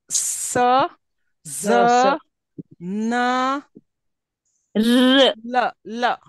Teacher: The next we have alveolar. It's like we get the sounds formed with the front part of the tongue on the alveolar ridge